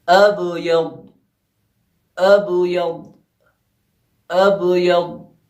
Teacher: الف کے بعد با میں جو ہے ہلکا سا ٹکراؤ پیدا ہوا، ہلکا سا اس لیے پیدا ہوا کیونکہ قلقلہ صغریٰ یہاں پہ ہوگا، بے جو ہے لفظ کے بیچ میں آیا ہے۔